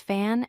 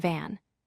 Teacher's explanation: Fan starts with the unvoiced F sound. Van starts with the voiced V sound. Notice how the only difference is the voicing.